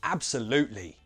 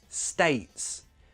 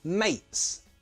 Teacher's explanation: And in this case, again, it's all about the position of the T in the word. See, there's a vowel sound before the T and a consonant sound after. In those cases, just pronounce the glottal T.